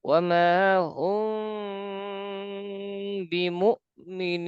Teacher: ওয়ামা হুম, মিম, মিম সাকিন, মিম সাকিনের পরে বা মিম আছে কিনা দেখবো। বা আছে, সুতরাং গুণা হবে